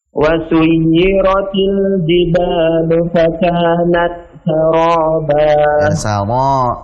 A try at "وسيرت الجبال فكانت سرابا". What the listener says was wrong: Jangan masuk hidung, Mbak. Saraba.